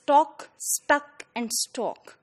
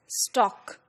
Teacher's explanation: talk stuck and stalk but they are all pronounced as stock you know in Nigerian English